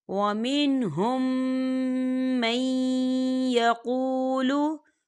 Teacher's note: وَمِنْهُمْ مَنْ يَقُولُ، دیکھیں وَمِنْهُمْ، یہاں میم ساکن ہے اور میم ساکن کے بعد میم آ رہا ہے، تو یہاں پر ادغام شفوی ہو رہا ہے، تو ہم اسے غنّے کے ساتھ پڑھیں گے